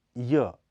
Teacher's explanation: यह अल्पप्राण घोष ध्वनि है इसका उच्चारण तालव्य संघर्ष हीन अर्ध स्वर की भांति होता है इसके लिए जीभ के अगले हिस्से को कठोर तालू के पास ले जाया जाता है